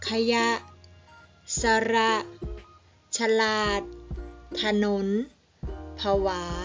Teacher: คำที่ออกเสียง2พยางค์โดยพยางค์แรกออกเสียงอะกึ่งเสียง